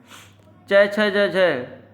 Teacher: च छ ज झ ये आपका तालु है, तालु व्यंजन है